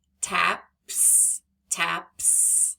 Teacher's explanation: that s is making the S sound because PP is unvoiced